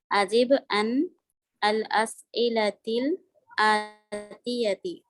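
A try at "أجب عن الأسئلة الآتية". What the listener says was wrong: کیونکہ آپ نے نون کے نیچے زیر نہیں دیا. جب بھی آگے ملانا ہوتا ہے نا تو یہاں پہ سکون ہونا تو پھر زیر دینا پڑتا ہے.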